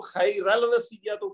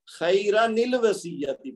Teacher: تو خیرن کو را الگ کر کے نون الگ کر دی گئی ہے، اور پھر نون ساکن کی بجائے اس کے نیچے کسرہ عارضی لگایا گیا ہے تاکہ اس کو آگے لام کے ساتھ ملایا جا سکے۔ تو اس کو یعنی یہ جو پہلے والا حصہ ہے اس کو خیر الوصیۃ پڑھنا غلط ہے، خیرن الوصیۃ پڑھیں گے۔ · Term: نون کتنی